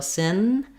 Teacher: for sin, I'm lifting my tongue into the position for the n sound, like in the word no.